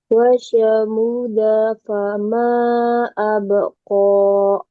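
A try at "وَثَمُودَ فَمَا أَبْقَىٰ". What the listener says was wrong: munya panjang. Kemudian ini sa-nya eh sa, ujung lidah ke ujung gigi atas ya. Ujung lidah ke ujung gigi seri atas. Mu-nya panjang atau pendek? Panjang.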